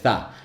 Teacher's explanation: And so I started thinking, okay, so it's a fricative at the front of the mouth without voicing